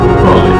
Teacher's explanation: in the word trolley, the first syllable is stressed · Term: stressed syllable